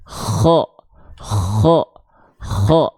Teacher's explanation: huruf kho itu dilafalkan dari tenggorokan paling ujung atau tenggorokan paling atas, tenggorokan paling luar · dia mengalirkan hembusan angin dengan karakteristik nafas ya yang seperti ada dengkuran